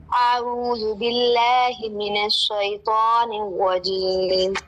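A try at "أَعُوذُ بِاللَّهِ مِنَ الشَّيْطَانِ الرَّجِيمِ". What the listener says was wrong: ایک چیز کا خیال رکھنا ہے, آپ نے منہ کھولنا ہے. اعوذ باللہ, لا نہیں باللہ.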